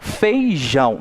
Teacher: eu coloquei uma intensidade maior no jão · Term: oxítona